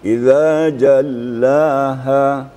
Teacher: La-nya itu kalau dalam tilawah tartil ini, murattal ini hanya sekedar penekanan. Tidak dipanjangkan gitu ya. Idza jallaha.